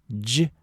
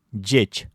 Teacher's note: «Дж» — это звонкий аналог «ч».